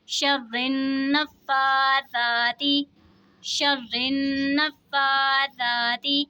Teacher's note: रा के नीचे ज़ेर है तो रा को बारीक पढ़ेंगे और तशदीद वाले हुरूफ को जमाओं के साथ अदा करेंगे।